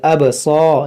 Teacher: یہاں پر با میں قلقلہ کریں گے، ابصار، یہ سواد موٹا کریں گے